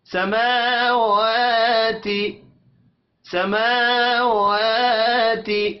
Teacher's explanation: سما میم کے اوپر کھڑی زبر ایک الف کے برابر کھینچ کر پڑھیں گے. و اس کو بھی ایک الف کے برابر کھینچ کر پڑھنا ہے، حرکات کھینچ کر نہیں پڑھی جائیں گی.